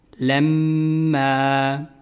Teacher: جب بھی میم مشدد ہو تو غنہ ہوگا، اور غنہ کی مقدار 1 الف ہے